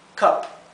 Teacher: La U se pronuncia entre una A y una E.